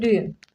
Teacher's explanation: Yəni bu mənada vurğu əvvələ düşəcək.